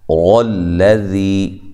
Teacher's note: غوئی، غین کو موٹا کریں، غوئی یا لین ہے۔ غلذی، را کو موٹا کریں، لام کو باریک، ذی یا مدہ ہے